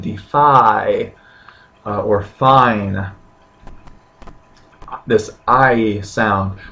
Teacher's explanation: This isn't two syllables. This is one sound, I. But as you're pronouncing it, your tongue is moving. You are combining these two kind of building block vowel sounds, the alpha and the iota, into one that's more complicated, but still remains one vowel sound and a unitary syllable. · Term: diphthong